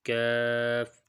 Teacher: قاف والے مخرج سے تھوڑا نیچے کر کے کاف ادا ہوتا ہے۔ یعنی یہ دیکھیں، اگر یہاں پہ یہ جو نرم تالو ہے کوے کے ساتھ، یہ کوے کے پیچھے ساتھ، یہاں سے اگر قاف ادا ہوتا ہے تو یہاں سے تھوڑا نیچے کر کے یہ کاف کی جگہ کا مخرج ہے، کاف، یہاں سے کاف ادا ہوتا ہے۔